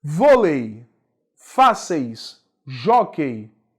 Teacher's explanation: caso acentuam-se as paroxítonas terminadas os ditongos decrescentes Ei e ão dois ditongos considerados como ditongos decrescentes que eu tenho vogal mais semivogal os ditongos e e ão aparecer no final de uma palavra